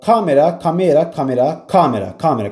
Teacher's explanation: Kamera da əvvələ düşür.